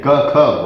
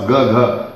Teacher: Like ka, kha, voiceless, and the counterparts ga, gha are voiced.